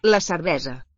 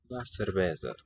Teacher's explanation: Catalan writes the voiceless S, but sounds it as a voiced one. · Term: voiced fricative